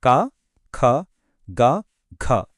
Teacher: మొదటిది కంఠ్యాలు గొంతులో పుట్టేవి